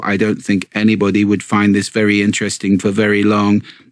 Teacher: speak in this quite quite Lively passionate way as opposed to speaking entirely on one note and at one pace without any prosody at all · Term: monotone